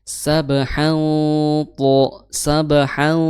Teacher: Tanwin bertemu to dihukumi sebagai ikhfa. Nah, ikhfa itu dibaca dengan samar, ya ditahan selama 2 harokat.